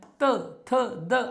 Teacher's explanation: आपली जीभ दाताला टेकते म्हणून ही दंते वर्ण आहेत